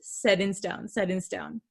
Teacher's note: you can't really hear that t sound